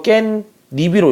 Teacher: 니은 소리가 두 개 덧났지